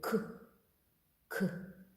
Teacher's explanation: тягнути от спробуйте к к він короткий і такий К К його не потягнеш щоб він тягнувся як голосний звук